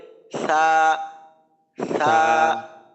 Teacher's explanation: সা বলার সময় জিহ্বার আগা সামনের উপরের দুই দাঁতের আগার সাথে লাগবে